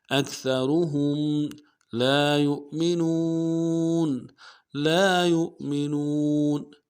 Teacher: اکثرہم لا یؤمنون لام کے ساتھ الف مدہ ہے، ایک الف دال میں کھینچیں گے، یا کو حمزہ کے ساتھ ملائیں گے، حمزہ کو جھٹکا دیں گے، حمزہ کے اوپر ساکن ہے یو، اور نون کو واو کے ساتھ ملانا ہے، واو مدہ ایک الف دال میں کھینچیں گے.